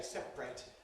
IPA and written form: ˈseprət (separate)